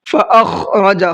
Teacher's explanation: خا کو تھوڑا سا حلق سے نکال کر کے پڑھنا ہے۔